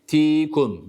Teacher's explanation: harfi meden y var değil mi Ne yapıyoruz burada bir elif miktarı uzatıyoruz